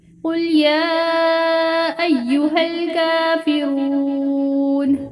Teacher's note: یا پہ مد بھی ہے کھڑی زبر، اسے لمبا کافی لمبا کریں گے